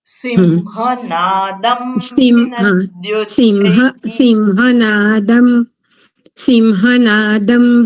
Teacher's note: અનુસ્વારનો ઉચ્ચારણ મકાર થાય છે પાછળ હ છે